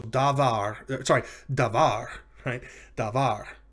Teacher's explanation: word davar means word or thing or matter and you'll notice it's two syllables da and var and the accent is on the second of the two